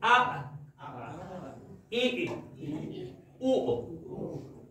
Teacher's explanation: for the hamza, you completely close down the vocal cords, which causes the air to stop.